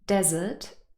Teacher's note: look at the phonemic transcript it also impacts the sounds because in the first word desert we really have a schwa sound here it's not stressed it's this very very short a sound